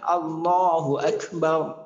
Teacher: আল্লাহ শব্দের আগে যদি জবর অথবা পেশ থাকে তাহলে আল্লাহ শব্দের লামকে ফোর বা মোটা করে পড়তে হয়।